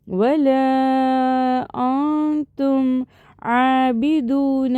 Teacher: த is one of த இக்ஃபா letter. So நம்ம நூனை பாதியாக மறைச்சி குன்னா செஞ்சு ஓதணும்